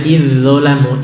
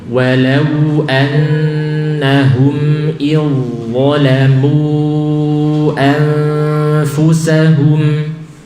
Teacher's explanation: Langsung masuk ke dha. Ya, bukan menyisakan zal.